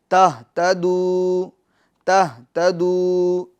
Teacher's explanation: آپ وقف کریں تہتدو پر یا وقف نہ کریں، دونوں صورتوں میں واو مدہ برقرار رہے گا، یعنی جیسا ہے ویسا ہی رہے گا۔